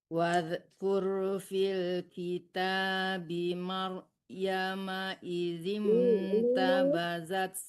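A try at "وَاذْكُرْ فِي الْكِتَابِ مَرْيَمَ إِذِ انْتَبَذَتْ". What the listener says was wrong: Dong, itu ada wakaf mim ya, berhenti, tidak boleh diteruskan. Maryam.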